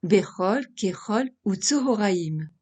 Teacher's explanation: Vous vous êtes sans doute demandé pourquoi on prononce le kamatz O au lieu de A dans les mots tels que Bechol, Kechol ou Tzohoraim. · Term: kamatz katan